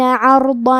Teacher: ہمیں ضاد کو اور مد الف کو دونوں کو بھاری آواز میں پڑھنا ہے